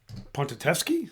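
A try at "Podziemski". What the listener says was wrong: There's no T. There's D.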